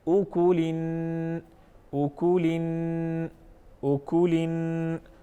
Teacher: आवाज़ को नाक में लेके जाएंगे, आवाज़ को नाक में ठहराएंगे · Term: गुन्ना